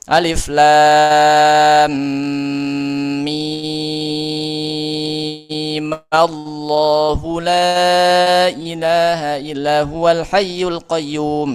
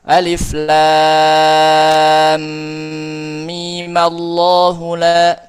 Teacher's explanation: Jadi masing-masing dibaca enam. Bisa juga mimnya dibaca dua langsung fathah.